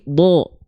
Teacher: ketika fathah bunyi vokalnya adalah O berarti dia adalah huruf yang sedang dibaca dengan keadaan yang tebal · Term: vokal o